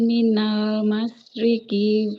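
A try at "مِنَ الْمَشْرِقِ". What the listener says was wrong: ujung-ujungnya. Nah, ujung-ujung katanya nggak boleh dipanjangkan ya. Minal masyriqi. minal masyriqi. Jangan panjang semua.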